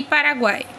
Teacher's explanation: temos uma semivogal uma vogal e uma semivogal novamente isso chamamos novamente de tritongo